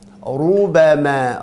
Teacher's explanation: lidah belakangnya diangkat, lidah depannya makhrajnya huruf ra, rubama, dan dimonyongkan karena ra-nya berharakat dhammah. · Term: dibaca tebal